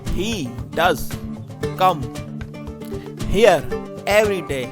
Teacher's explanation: The emphasis is on does and every day.